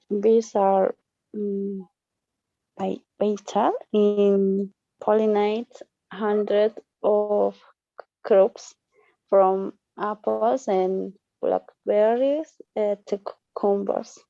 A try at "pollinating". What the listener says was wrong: Don't forget about the ing here. Pollinating. Pollinating.